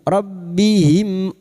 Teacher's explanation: Karena kita sekarang melanjutkan ( wasl), sukun mim bertemu dengan hamzah adalah idhar syafawi. Sukun mim dibaca dengan jelas tanpa bersenandung